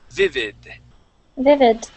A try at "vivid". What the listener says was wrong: Okay, vivid. Okay, when you pronounce that during the reading, it sounded more like a T, saying vivid. Okay, remember when we say that D, you want your tongue to hit the top of your mouth. Vivid.